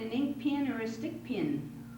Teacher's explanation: they pronounced pen and pin identically because of this Elizabethan pronunciation characteristic that we still have